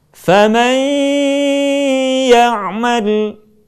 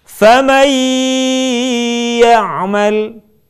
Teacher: Contoh, kalimat faman ya'mal akan lebih sempurna kalau sebagian suara kita keluarkan melalui rongga hidung. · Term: gunnah